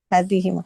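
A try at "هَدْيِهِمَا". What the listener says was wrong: Hadi, dalnya di sukun, hadi.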